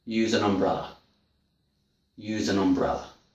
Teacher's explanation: I don't say ah. I say use an umbrella. I say the schwa sound. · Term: weak form